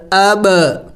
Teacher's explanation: बा हुरूफ़ क़लक़ला में से है, साकिन है, हुरूफ़ क़लक़ला को हिला के पढ़ा जाता है, तो इसको हिला के पढ़ेंगे।